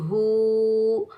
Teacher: ہا کے اوپر الٹا پیش ہے تو ہا کو ہم ایک الف کی مقدار میں کھینچ کر ادا کریں گے